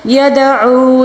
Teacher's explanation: یدعو دال کے اوپر جب ساکن آ جائے اس کو قلقلے کے ساتھ پڑھنا ہوگا۔ او یہاں پر او میں واو مدہ آتا ہے کیونکہ واو ساکن سے پہلے والے حرف کے اوپر پیش ہے تو اس کو واو مدہ کہا جاتا ہے۔